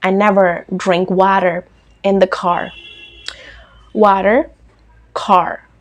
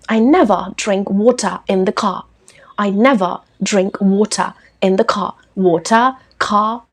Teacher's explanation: आप London style में आर को ड्रॉप कर सकते हैं, वर्ड्स के अंत में आर को ड्रॉप कर सकते हैं लंदन स्टाइल में, और वर्ड्स के एंड में आर को प्रोनाउंस कर सकते हैं अमेरिकन स्टाइल में.